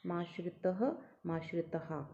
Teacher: त के बाद जो विसर्ग है दो डॉट है उसमें तहा भी बोल सकते हैं तह भी बोल सकते हैं